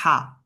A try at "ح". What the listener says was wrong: Non, c'est pas a. Au fond de la gorge. Et tu fais, voilà, voilà. Comme tu as quelque chose dans la gorge, tu vas la sortir.